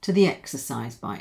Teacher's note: Now here, before it was a weak the, now because it's linked to a following vowel, it's a linking ya.